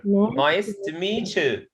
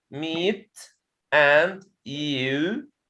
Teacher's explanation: ta followed by ya changes to cha